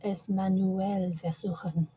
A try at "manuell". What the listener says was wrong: Yeah, you notice the difference between how I said manuell and how you said it? There's a short pause here between the U and the E. Yeah, manuell.